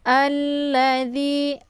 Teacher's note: Cara bacanya yaitu a-nya dimasukkan ke dalam huruf la atau disebut juga dengan idgham syamsiyah. Jadi alif lam ini tidak lagi dibaca. Alla ditekan saja ya. Alladzi, la-nya dibaca pendek. · Alladzi, la-nya dibaca pendek. Kemudian di dibaca panjang, ada ya sukun sebelumnya berharakat kisra, dinamakan dengan mad tabi'i. Cara bacanya cukup dipanjangkan 2 harakat saja.